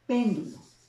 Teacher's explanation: También tiene la sílaba tónica de mayor intensidad en la antepenúltima sílaba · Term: esdrújula